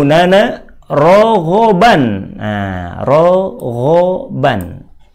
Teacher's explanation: tanwin pada kata rowen harus Ditahan lama disertai guna